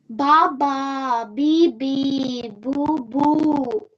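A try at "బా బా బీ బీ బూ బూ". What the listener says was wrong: Okay, it should be slight. No stress should be there. Ba ba be boo boo.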